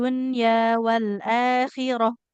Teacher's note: kalau mau berhenti, wal akhirati ini nggak boleh dibaca ti ya.